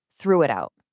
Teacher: You're connecting the consonants to the vowels smoothly. Instead of a hard T, use a soft, flapped T so it almost sounds like a D.